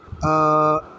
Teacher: حمزہ کھڑی زبر آ کو ایک الف کے برابر لمبا کریں گے